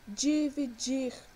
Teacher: Porque a sua sílaba tônica é a última, é o dir